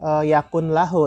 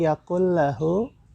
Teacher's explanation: hukum bacaannya adalah idgham bila gunnah, ya. Jadi tidak dibaca yakun lahu, tapi yakul lahu.